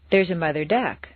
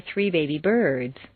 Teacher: stress the second word of each phrase